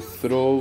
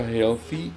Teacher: in this class let's get started first the sound is produce placing your tongue between your top and bottom teeth and push the air out this sound is voiceless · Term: th sound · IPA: θ